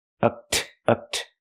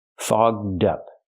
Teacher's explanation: We have to use the open vowel aw and the voice g and d.